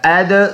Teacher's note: دال میں قلقلہ ہے، آواز مڑ کے آئے گا